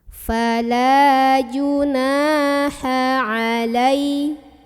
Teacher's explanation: Maka cara membunyikan nunnya dipanjangkan 2 harokat. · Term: mad tabi'i